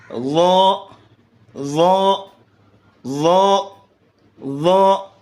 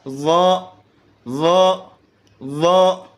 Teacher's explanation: زبان کی نوک کو سامنے اوپر والے دانتوں کے کنارے کے ساتھ لگائیے اور زبان کی جڑ کو پیچھے سے اوپر کی طرف اٹھائیے موٹا پڑھنے کے لیے